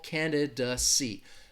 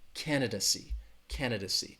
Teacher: candidacy candidacy the stress is on that first syllable candid see that third syllable has that schwa